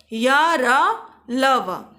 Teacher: जिन व्यंजनों का उच्चारण स्वर और व्यंजन के मध्य का होता है उन्हें अंतस्थ व्यंजन कहते हैं। ऐसे व्यंजनों के उच्चारण में जीभ मुख के किसी भी भाग को पूर्णतः स्पर्श नहीं कर पाती है। इन्हें अर्धस्वर भी कहा जाता है।